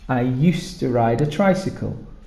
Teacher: It's very important that you write the D for used to, but the pronunciation, listen, I used to ride a tricycle. We don't actually say the D because you have D and T together and it becomes one sound.